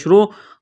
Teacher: را کو موٹا کرنا ہے ، پیش کی وجہ سے تشدید ہے تو اس کو دبائیں